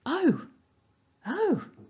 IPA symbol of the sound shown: əʊ